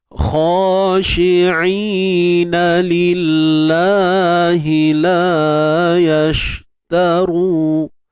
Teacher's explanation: Lillah, kalimah Allah kita baca nipis saja. Nipis sebab sebelumnya baris bawah.